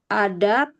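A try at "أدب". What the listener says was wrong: Ada panjang ya. Ya, ada, betul.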